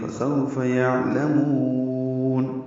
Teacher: فسو اولین ہے. یعلمون عین ساکن پہ اظہار، لام کو باریک اور جلدی سے پڑھیں گے، اور میم کو لمبا کریں گے